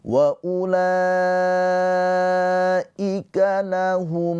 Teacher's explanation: Mim sukun bertemu selain mim dan ba. Ini adalah izhar syafawi. Dibacanya dengan jelas mimnya.